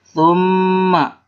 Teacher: mim gunah ya, dibacanya tahan 2 harkat